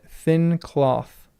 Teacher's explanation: TH represents the voiceless TH of English in thin cloth.